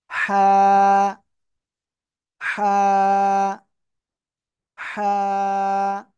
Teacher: গলাটা চেপে হালকা বাতাস বের করে 1 আলিফটা নিয়ে উচ্চারণ করব। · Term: গলা চেপে